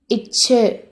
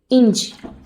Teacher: இடை அன்னத்தை வேற எப்படி சொல்லலாம்னா நடு அன்னம் இல்லாட்டி வன் அன்னம். நாக்கோட நடுப்பகுதி இடை அன்னத்தை தொடும். அதுதான் இடை அன்ன ஒலி.